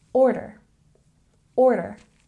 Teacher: we have a stress on the first syllable